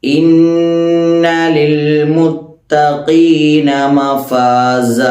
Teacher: ഇവിടെ ശ്രദ്ധിക്കാനുള്ളത് ആദ്യം ഇന്ന, നൂന്, മീമ് എന്നീ രണ്ടക്ഷരങ്ങൾ ശബ്ദ സംഭവിച്ചു കഴിഞ്ഞാൽ മണിക്കുക എന്നുള്ളത് തജ്വീദിൻ്റെ ഒരു പൊതുവായ നിയമമാണ്. ഇവിടെ നൂനിന് ശബ്ദം സംഭവിച്ചത് കൊണ്ട് തന്നെ ഇന്ന എന്ന് തരിമൂക്ക് കൊണ്ട് നമ്മൾ മണിക്കണം.